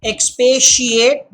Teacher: That T makes the sh sound.